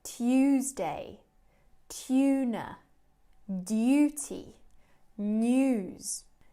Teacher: in british english and australian english these words have a yes sound tuesday tuna duty news in american english they often drop this